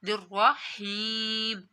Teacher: یا ساکن سے پہلے اگر زیر آ جائے تو یا مدہ ہوتا ہے، حرف مدہ کو بھی لمبا کر کے پڑھا جاتا ہے ایک الف کے برابر